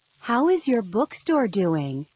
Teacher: Notice how some vowel sounds are linked with a w or y sound.